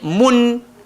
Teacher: Jadi dia punya bunyi mun 100%. Kita akan dengar bunyi nun tu, lidah kita langgar le langit, mun, dan dia tak berhajat kepada panjang. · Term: izhar